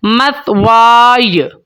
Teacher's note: سا کی سیٹی نہیں نکالنی آپ نے، اور یا کی آواز کو آپ نے ظاہر کرنا ہے